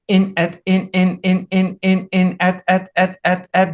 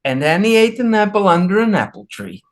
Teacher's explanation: If I say in or at, I start with the same glottal stop. So in, at, in, at, there you hear it.